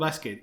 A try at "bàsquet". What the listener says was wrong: Si em permets, crec que la pronunciació és basquet en català, no bàsquet.